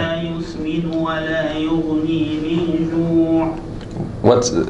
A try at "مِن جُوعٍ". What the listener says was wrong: You remember min ju'? So it's same. So same issue as min ضريع. Make it longer, a lot longer.